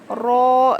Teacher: زبان کا سائیڈ کا حصہ اوپر کے چار دانتوں کے مسوڑوں میں لگانے سے را ادا ہوتا ہے